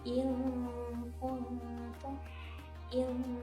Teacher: Ikhfa yang pertama memang harus didengungkan di pangkal lidah.